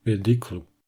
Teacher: on observe une chute de la voyelle pénultième inaccentuée, c'est-à-dire l'avant-dernier ou. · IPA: */peˈdɪkl-u/